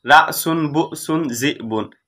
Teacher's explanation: এগুলোর মধ্যে হামজা হচ্ছে সাকিন বিশিষ্ট, কিন্তু তারপরেও তা উচ্চারণে কঠিন এবং ধাক্কা সহ উচ্চারণ করতে হয়